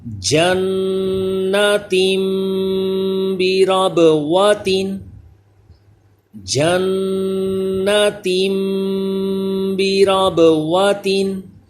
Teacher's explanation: پڑھیں، اور نون مشدد ہے اس میں بھی غنہ کریں گے، با حروف قلقلہ ہے اس میں قلقلہ ہو آواز لوٹ کر آئے